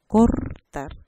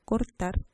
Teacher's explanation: podemos pronunciar tanto cortar con la vibrante múltiple como cortar con la vibrante simple. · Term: variación libre